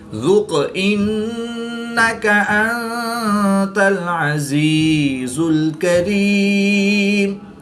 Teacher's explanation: قاف حرف قلقلہ میں سے ہے اور یہ ساکن ہے تو یہاں پر قلقلہ صغریٰ کر کے پڑھیں گے